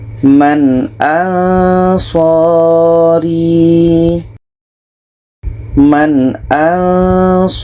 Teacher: Nun jelas, hamzah jelas, dan tidak ada dengung. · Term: izhar halki